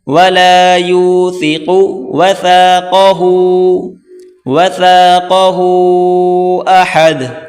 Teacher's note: ثا کو پڑھتے وقت زبان کی نوک باہر نکال کر پڑھیں گے، قوف کو موٹا کریں